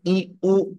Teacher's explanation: Y la I y la U vocales altas. La I vocal anterior alta y la U vocal posterior alta.